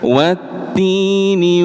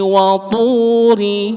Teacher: Hanya tadi yang perlu panjenengan perhatikan bahwa bunyi tu pada ayat pertama dan ayat kedua niko hurufnya ber beda. Yang ayat pertama hurufnya ta tipis hams. Ayat kedua hurufnya tho tebal jahr ngoten tanpa nafas.